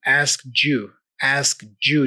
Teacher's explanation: But then the D there for asked, when combined with the Y for you, we make this j sound